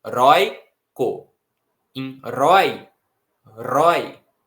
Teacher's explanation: qual que é a vogal que a gente pronuncia de maneira mais forte? É o O, não é o I. Senão ficaria heroico, heroico, mas é heróico. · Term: ditongo decrescente